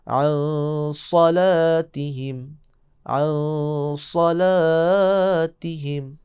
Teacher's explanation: عن نون ساکن صاد کو موٹا پڑھیں